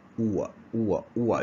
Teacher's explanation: The tongue will move to schwa at the final end. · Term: centering ending